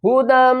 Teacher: ہا پیش ہو، دال کو ہم میم سے ملائیں گے، اس یا کو بھی نہیں پڑھیں گے، دال دو، میم زبر دم، غنہ کریں گے، کلرفل ہے۔ دیکھیں جب بھی میم مشدد ہوگی تو ہم میم کے اوپر غنہ کریں گے، ہمیشہ ہی غنہ کریں گے، ہدم۔